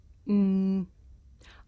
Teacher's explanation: I make this sound by closing my lips and letting the sound come through my nose. Mm. I can even feel my nose vibrating.